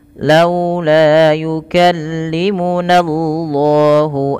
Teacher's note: lafzul jalalah didahului dengan fathah maka lamnya dibaca dengan tebal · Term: lam tafhim